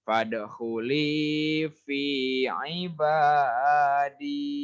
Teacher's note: Fadkhuli panjang, fi panjang, aiba panjang, di panjang juga.